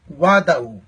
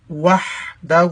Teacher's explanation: ہا کو واضح کریں گے. ہا کا مخرج حلق کا درمیانے حصہ ہے, حلق کے درمیانے سے نکالیں گے